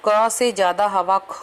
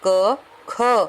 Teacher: क, तो आपको पता है कम हवा निकली, चाहे आप हथेली को पलटकर मुंह के आगे ले जाइए। ख, अब देखो क से ज्यादा हवा ख में निकलती है। क, ख, तो ख में ज्यादा हवा निकली तो हमने ज्यादा लिखना है।